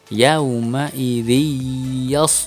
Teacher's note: tidak boleh terbaca n lagi tetapi harus masuk ke dalam huruf ya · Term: Idgham Bighunnah